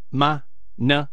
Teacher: Okay, I see. So those 2 words have no tone and they're just pronounced lightly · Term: neutral